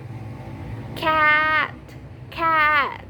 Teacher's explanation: a is known as a front low vowel because the sound is made at the front part of the mouth with the tongue in a low position · when you say cat, the a sound make it sound bright and open. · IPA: /æ/